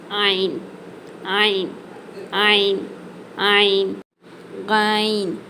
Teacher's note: முதல்ல ஐன் இந்த எழுத்து நடுத்தொண்டையிலிருந்து வெளியாகணும்